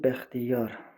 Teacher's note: Vurğu sonuncu yerə düşür.